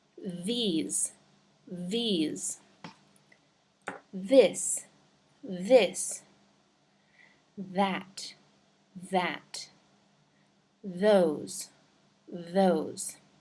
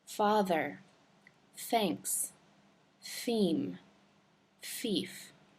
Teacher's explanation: The only difference is that for the second sound, th, th, there is a vibration happening in the vocal cords, and you might feel it a little bit on your tongue too. Your tongue might vibrate a little against your teeth.